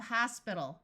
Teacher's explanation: Notice that AL at the end of a word usually sounds more like ul rather than al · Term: ul sound